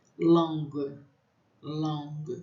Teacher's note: eu tenho o A anasalado também